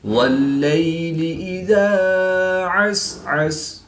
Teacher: یا ساکن سے پہلے لام مشدد پر زبر ہے تو یا لین ہوگا، اس کو لمبا نہیں کریں گے